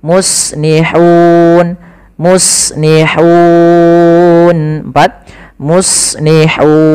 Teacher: sebelum matikan nunnya kita boleh memanjangkan 2 harokat, boleh 4 harokat, boleh pula 6 harokat. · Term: mad arid sukun